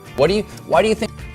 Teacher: we reduce do drop the t from what and connect the two words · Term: connected speech